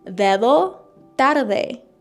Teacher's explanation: They're actually called dental in Spanish, like your tongue touches the back of your teeth, but in Russian these are alveolar sounds, I think this is how you say it, which are basically a little bit further back in my mouth.